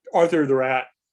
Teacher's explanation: And what she's doing is she's not saying a glottal stop at all, but she's got what sometimes people talk about as vocal fry or creaky voice just at that little end of it. And that's what signals the T in her speech.